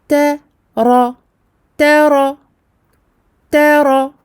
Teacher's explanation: Ta aminci, ra emphatique. Ra mufakhama.